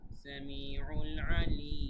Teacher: সামিউল আলিম, তিন আলিফ টান এখানে হবে, কেননা মাদ্দে আরজি হয়েছে, জেরের বাম পাশে যজমলা ইয়া এসেছে, মাদ্দে তবাইয়ের সাথে সদৃশ, কিন্তু এরপরের অক্ষরে যে থামার কারণে সেটা মাদ্দে তবাই না হয়ে মাদ্দে আরজি হয়ে গেছে, এক আলিফ টান না হয়ে তিন আলিফ টান হবে।